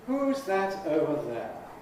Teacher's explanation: Each word has a stress. So we have four rhythmic beats. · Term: low fall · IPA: ˈhuːz ˈðæt ˈəʊvə ˎ_ðeə_